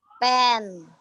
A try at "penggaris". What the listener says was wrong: Tambah N sama G, eng. Jadi, peng, G-A, peng, pengga, jadi digabungkan.